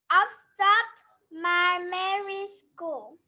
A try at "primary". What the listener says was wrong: M, âm ơ đâu? Nào, không phải e.